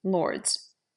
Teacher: there is no break between the D and the S